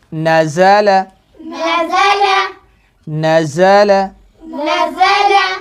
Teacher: نون کو باریک، زا کو سختی سے، لام کو بھی باریک